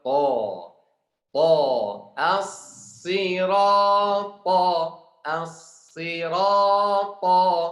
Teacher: huruf ta kuat. Kita harus baca tebal